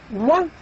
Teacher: The third sound is the first sound in wet. The wa is considered approximant as well, and it is indeed labio-velar approximant.